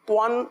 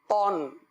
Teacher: قرآن پاک میں جب بھی تو پڑھیں گے تو اس طرح پڑھیں گے تو، اور تنوین کے ساتھ پڑھیں گے تو توان نہیں پڑھیں گے تون۔ صحیح ہے، میرے ہونٹ گول نہیں ہو رہے، کیونکہ دو زبر میں زبر زیر میں ہونٹ گول نہیں ہوتے، نہ ہی کسی حرف میں سوائے واو اور پیش، اس کے علاوہ کسی حرف میں بھی ہونٹ گول نہیں ہوتے، اس بات کا خاص خیال رکھیے گا۔